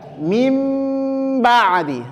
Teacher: menempelkan kedua bibir disertai dengan penekanan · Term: intibaq